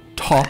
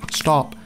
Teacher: stop doesn't have that puff of air